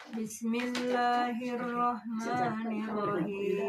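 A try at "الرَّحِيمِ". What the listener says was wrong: Nirrahim. Tahan. Yang tasdid tahan ya.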